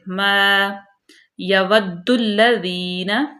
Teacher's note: ما یود الذین، واو کو ہونٹوں کی گلائی سے، یا بالکل باریک، دال مشدد، دال کو لام میں ملائیں گے